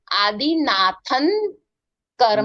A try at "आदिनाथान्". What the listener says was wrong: नाथन। थन नहीं, थन थन आ है ना, बालन, ऐसा आदिनाथन। आ का उच्चारण करना।